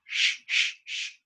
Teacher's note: when you go shh, shh, shh, the air goes through the hard palate.